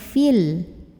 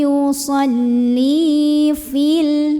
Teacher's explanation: Namanya takhallus bil hadfi. Jadi kalau nggak berhenti jangan sampai dibaca panjang, gugur pemanjangnya, jadi pendek.